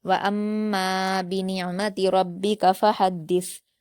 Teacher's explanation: दाल को सख्ती से जल्द पढ़ेंगे और सा पर जज्म करते हुए वफ कर देंगे। · فحدث، فا پر حرکت ہے، ہا پر بھی حرکت ہے، دال پر تشدید ہے، ہا کو دال سے ملا کر جلد پڑھیں گے، دال کو سختی سے جلد پڑھیں گے اور سا پر جزم کرتے ہوئے وقف کر دیں گے، سا کے مخرج کو نرمی سے ادا کیا جاتا ہے۔